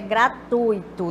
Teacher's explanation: nós temos aqui um ditongo e não hiato